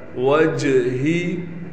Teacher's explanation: जीम पर कलकला किया जाएगा